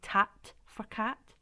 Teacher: making a k sound at the front and turning it into a ta